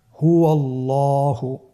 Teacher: এখানে আল্লাহ শব্দের দ্বিতীয় লামটি মোটা হবে